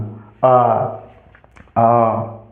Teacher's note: पश्च भाग जीभ का जा रहा है, ऊपर उठ रहा है